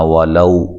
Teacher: زبر ہے واو کے اوپر، اور واو کو لمبا نہیں کرنا، واو کو ادا کرتے ہوئے ہونٹوں کو گول کرنا ہے